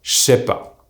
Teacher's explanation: the je becomes the single sound j, and we remove the ne, so j, and the sound s from the word c'est becomes sh.